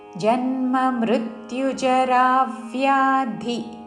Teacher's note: జన్మ జా మీద మృ మీద రా మీద ఆఘాత పలుకుతూ జన్మ మృత్యుజరా వ్యాధి చివరిలో మహాప్రాణాక్షము ధి హ్రస్వము.